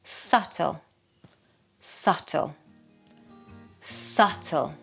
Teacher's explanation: Now this one, another dreaded silent letter. Yes, we don't pronounce the B.